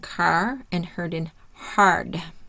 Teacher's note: Tongue and mouth start open and then close for the R sound